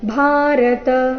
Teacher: ಭಾರತ ಭಾ ಮಹಾಪ್ರಾಣ ದೀರ್ಘ ಬರಬೇಕು.